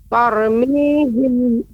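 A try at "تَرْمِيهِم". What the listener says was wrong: Ya, ra ini dibaca tebal. Tarmihim. Tadi yang pertama kali diucapkan tipis. Tarmihim. Tebal. Tadi yang kedua sudah benar. Dibaca tebal, Ibu. Tarmihim.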